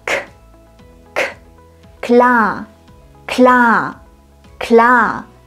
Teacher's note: Das K am Wortanfang zählt zu den sogenannten Plosiven. Bei solchen Konsonanten hören wir eine leichte Explosion. Dabei stoßen wir intensiv Luft aus.